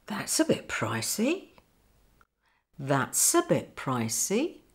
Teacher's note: notice the link between s and uh